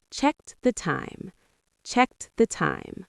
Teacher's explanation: You might barely hear the T, but it's there. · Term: t sound